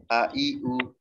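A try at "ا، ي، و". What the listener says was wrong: pendek. A, I, U. Iya, jangan ditekan, jangan. A, I, U, jangan ditekan. Itu nanti jadi A, Ain. Lepas, ya.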